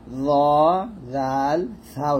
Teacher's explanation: তারপর এই 3টে হরফ আমরা জিহ্বার আগা সামনের উপরে দুই দাঁতের আগার সঙ্গে লাগিয়ে ল জাল সা উচ্চারণ করব